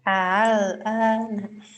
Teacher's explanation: A pertama tahqiq hamzah, yang kedua tasil. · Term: tashil baina-baina